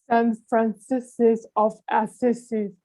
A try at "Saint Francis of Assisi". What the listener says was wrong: No, itchy, and it's not Francis's, it's Francis. Saint Francis.